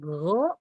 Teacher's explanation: pangkal lidahnya naik, terangkat ke atas. Sehingga kalau go dia isti'la.